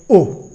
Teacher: कंठ और ओष्ठ दोनों के मिलने से ओ और ओ का उच्चारण होता है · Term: कंठोस्थ